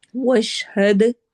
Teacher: दाल पे कलकला करेंगे, आवाज को हिलाएंगे